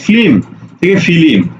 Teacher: তার মানে কি যুক্ত ব্যঞ্জন ভেঙে যাওয়া লক্ষ্য করো এই যে যুক্ত ব্যঞ্জন ফ্লিম থেকে ফিলিম অর্থাৎ যুক্ত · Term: মধ্য স্বরাগম